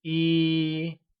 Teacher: 1 translates to 一 and is pronounced with a high level tone